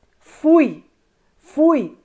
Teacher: nesse caso você tem na mesma sílaba o u mais Evidente e o i não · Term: semivogal